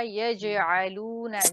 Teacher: जीम के ऊपर कलकला वाज़े तौर पर होना चाहिए।